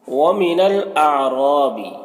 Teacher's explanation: یہاں پر را کے اوپر زبر ہے تو را کو پر پڑھیں گے